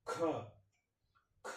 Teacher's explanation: வாயிலிருந்து காற்று அதிகமாக வரும் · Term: மகா பிராணில்